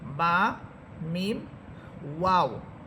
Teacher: মিম মিম হরফটার মাখরাজ হচ্ছে দুই ঠোঁট থেকে মিম হরফ উচ্চারিত হবে। মূলত দুই ঠোঁট থেকে তিনটা হরফ উচ্চারিত হয়, একটি হচ্ছে বা, আরেকটি হচ্ছে মিম, আরেকটি হচ্ছে ওয়াও। · এখানে আমরা বা হরফটা যে মাখরাজ পড়েছিলাম যে দুই ঠোঁটের ভিজা অংশ থেকে বা হরফ উচ্চারিত হয়